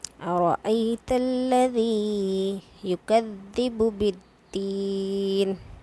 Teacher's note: इस आयत के अंदर हमें दो जगह हरफ मद्दा मिला है, एक तो यहाँ पर या मद्दा और बिद्दीन के अंदर या मद्दा, दोनों ही जगह हमें या मद्दा को क्या करना है, 2 हरकत के बराबर यानी कि 1 अलिफ के बराबर खींच कर पढ़ना है।